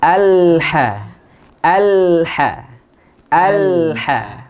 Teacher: Lam itu tawassut, ya. Tawassut artinya suara tidak terputus dan juga suara tidak mengalir deras.